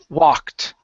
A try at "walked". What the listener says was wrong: Walked. Okay, so you're pronouncing an extra sound after that K. You're saying walked. So take out the I sound. You're saying K. Walk. Instead of walk, it's walked. Walked.